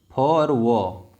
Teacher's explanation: दंतोष्ठ से उच्चारित होने वाले व्यंजन हैं